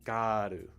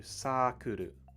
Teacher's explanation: words we have girl circle world bird a lot of them when you say these words in japanese the er sound is actually used as an ah an ah sound